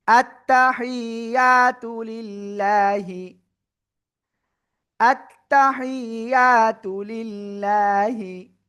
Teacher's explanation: আল্লাহ শব্দের লাম এর ডাইনে জের রয়েছে, চিকুন করে পড়বো।